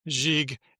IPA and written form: ʒig (GIGUE)